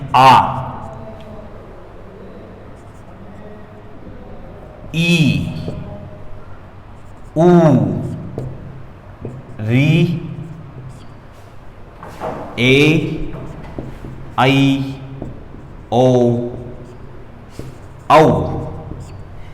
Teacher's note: जिन वर्णों में अधिक समय लग रहा है उच्चारण करते समय, दुगनी आवाज यानी कि दुगनी ध्वनि का प्रयोग किया जा रहा है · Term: दीर्घ स्वर